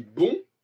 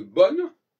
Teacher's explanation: Si je dis bon, au lieu de bonne, eh bien, j'élimine la consonne N.